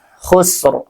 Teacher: Nah, makanya dinamakan dengan waqaf isyarah. Khusr, dan ro-nya tetap kedengarannya tebal ya, tafkhim.